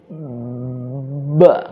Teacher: Ba itu kan makhrajnya itu syafatayn ya. Bibir dua gitu. Nah, cara mempraktekannya kan ba itu bibir itu rapat. Ba. Jadi sebelum mengucapkan ba itu bibir kita udah rapat duluan. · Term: huruf ba